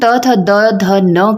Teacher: हमारी जीभ जब भी हम त थ द ध न कहते हैं तो किसको टच कर रही हैं हमारे दांतों को टच कर रही है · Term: दंती ध्वनियों